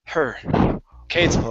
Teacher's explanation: take off the E sound and reduce the H. The H is less. Okay. It's sort of like a breath.